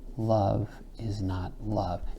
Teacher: Shakespeare loves that strong, weak, weak, strong. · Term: trochaic inversion